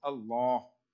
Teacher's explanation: So when there's Allah, the lam becomes full mouth. Allah. Everywhere else, lam is empty mouth.